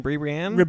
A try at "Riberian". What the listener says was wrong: Riberian. Riberian. It's got an R at the beginning. Riberian. Riberian.